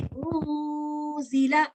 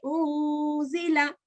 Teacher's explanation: we're going to prolong this for 2 counts, and we're going to hide this N sound